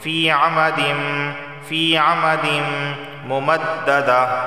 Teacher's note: تنوین کے بعد میم آیا ہے اور میم حروف یرملون میں سے ہے تو اس وجہ سے یہاں پر ادغام اور غنہ دونوں ہوں گے